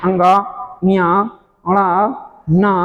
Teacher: न म यह पांचों क्या कहलाते हैं नासिक व्यंजन कहलाते हैं नासिक व्यंजन इसलिए कहलाते हैं कि इनका जब उच्चारण हम करते हैं तो हवा केवल नाक से निकलती है